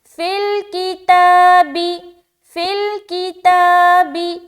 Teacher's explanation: فا کو تو جلدی ملائیں گے لام سے، کاف کو بھی جلدی پڑھنا، با کو بھی جلدی پڑھنا. کھینچیں گے کہاں؟ صرف اور صرف تا میں